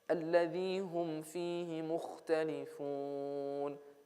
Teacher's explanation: becomes idhar shafawi because I have mim with sukun.